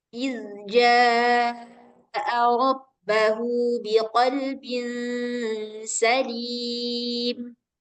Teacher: ada zal dengan jim, hampir mirip, walaupun letaknya jauh ya, yang satu di tengah lidah, yang satu di ujung lidah